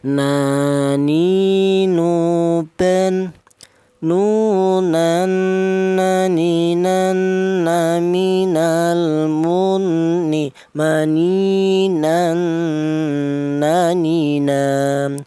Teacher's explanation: Huruf nun keluarnya huruf berasal dari ujung lidah menuju langit-langit mulut